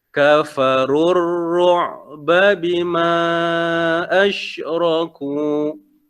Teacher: Pada ru ni kita tak perlu panjangkan